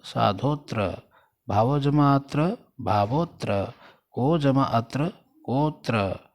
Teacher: इस अ को साइलेंट पढ़ा जाता है संस्कृत में जब संधि हो जाती है, और जब विच्छेद हो जाता है तो उसको फिर दोबारा से उसको बोला जाता है, पढ़ा जाता है, परंतु संधि में ये साइलेंट हो जाता है। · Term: अवग्रह